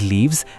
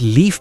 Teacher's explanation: To speak both, you have to place your upper teeth on your lower lip. The only difference is that while saying V, your vocal cords vibrate, whereas in F, only air comes out.